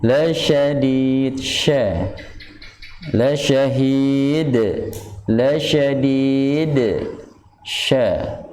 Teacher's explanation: memberikan celah udara lebih deras keluar di samping sifat hamas